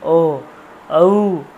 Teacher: ও ঔ, ও ঔ, ওষ্ঠ, কণ্ঠ লাগছে, ওষ্ঠ লাগছে, ও ঔ। জিহ্বা কিন্তু লাগছে না, দেখুন কণ্ঠ আর ওষ্ঠকে লাগছে, এই জন্য ঔ হয়ে গেল।